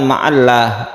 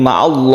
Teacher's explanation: maka ditebalkan maka dibaca tafkhim